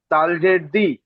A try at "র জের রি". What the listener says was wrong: তাল নয়, র। রজের রিটা বানান করলেন, পিছনের সাথে যুক্ত করেন, তারপর শেষ অক্ষরটি বানান করবেন।